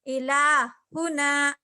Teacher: इलाहुना में लाम पे खड़ा जबर है, ला खींच रहे और हा को नहीं खींच रहे हम